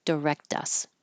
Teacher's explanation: um this K so you it probably is voiceless directus but your voice is turning on for the vowel in us so it's going to turn into a d